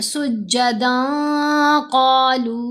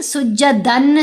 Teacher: ہم نے نون کی آواز کو ناک میں چھپا کر پڑھنا ہے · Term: احفا